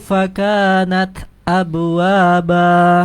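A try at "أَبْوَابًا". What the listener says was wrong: Jangan abwa tapi abwaba, qalqalahnya harus kuat. Abwaba tidak abwaba. Abwaba dengan abwaba. Ya, pantulannya kol-kolah huruf ba ya.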